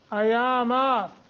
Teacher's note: ایاما کھڑی زبر ہے دونوں جگہ تو ایک ایک الف کے برابر لمبا کریں گے